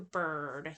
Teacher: the mid height, and it's central, tense, and rounded